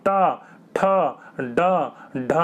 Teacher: जीभ देखिए आपकी फोल्ड होकर पीछे वाले हिस्से से टकरा रही होगी। तो पीछे वाले हिस्से से टकराएगी तो क्या कहलाएगा, मूर्धन्य कहलाएगा।